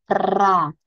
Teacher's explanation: Nanti pada saat ra, nah lidahnya harus bergetar.